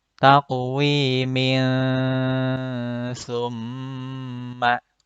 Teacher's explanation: Kalau disambung dengan bacaan setelahnya, menjadi ikhfa. Tanwin bertemu dengan huruf sa.